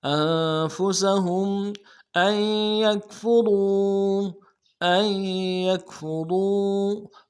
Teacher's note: را کو واو کے ساتھ ملانا ہے، را کو موٹا کریں گے، واو مدہ ایک الف دال میں کھینچیں گے